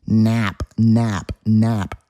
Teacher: Listen to that nasally A sound.